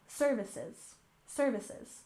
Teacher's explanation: And services, stress the first syllable